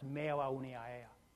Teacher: how a word can exist almost entirely of vowels, where the vowels sort of glide from one to each other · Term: vowel clusters